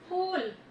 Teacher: सही शब्द जो होगा उसका प्रोनाउंसिएशन जो उच्चारण होगा वो होगा फूल। फूल यानी दोनों लिप्स आपके मिलेंगे और खुलेंगे